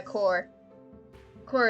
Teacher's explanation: core it has three silent letters because in a non-rhodic accent like australian english we don't pronounce the r